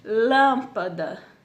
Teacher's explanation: o lan ele sobressai do restante da palavra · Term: proparoxítona